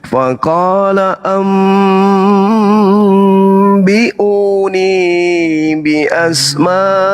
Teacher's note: Faqala didengungkan, didengung. Jadi nun dipalingkan menjadi ba. Tidak ada huruf nun di situ, hilang dia menjadi huruf ba. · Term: iklab